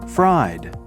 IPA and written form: fraɪd (Fried)